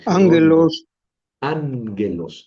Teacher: cuando yo tengo una gama antes de una gutural, su sonido es como una ni.